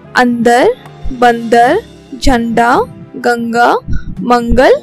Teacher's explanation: हमने जब इन शब्दों का उच्चारण किया तो हमारा उच्चारण नाक से हो रहा था। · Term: अनुस्वार